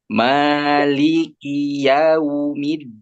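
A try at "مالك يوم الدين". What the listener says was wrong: Awas, dalnya jangan terlalu kedorong kayak orang Jawa. Middin, middi, middi, ya gitu ya. coba dal di mana dal? Iya, ujung lidah menyentuh gigi seri bagian mana? Ujung gigi seri. Middin dong, mid. Pangkal. Pangkal gigi seri atas berarti kena ujung gusi.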